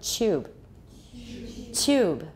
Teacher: Palatalization. Because of palatalization, it became affricated. 它就变成一个色差音. Tube.